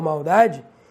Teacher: como é o caso de maldade ele tem som de u